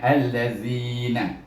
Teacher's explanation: Baris atas al diidgham syamsi dengan lam